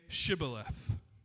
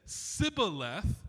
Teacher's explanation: because they didn't say the sh sound, they said s